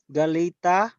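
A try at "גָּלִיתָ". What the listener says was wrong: Okay, make it soft. Make the Tau soft. Like when you say the, all right? The or yes.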